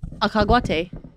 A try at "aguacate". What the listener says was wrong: You're hitting a hard G on aguacate. It's agua. Agua. Agua. Agua.